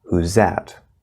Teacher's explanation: in fast speech the z sound like in whose can cover the voiced th sound